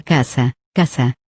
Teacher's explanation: en la palabra casa, casa, la primera sílaba es tónica y la segunda, átona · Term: sílaba tónica